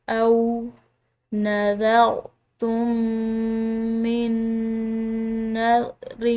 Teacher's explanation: دونوں میم کو ایک میم کی طرح پڑھیں گے · نون ساکن کے بعد نون مشدد ہے تو اس کے ساتھ ادغام بالغنہ، یعنی کہ اس کو غنہ کے ساتھ مدغم کر کے پڑھا جائے گا